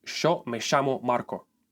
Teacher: if you immigrated to Buenos Aires, you stick with a sh sound